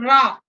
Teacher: रा में घर्षण होता है और कंपन होता है, इसीलिए उसको प्रकंपित मतलब कांपता हुआ, इसीलिए उसको रा, घर्षण के साथ वायु बाहर निकल रही है इसलिए उसे प्रकंपित कहते हैं।